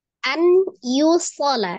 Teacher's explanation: masuk dengan dengung ditekan dan ditahan dua harakat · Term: idgham bi gunnah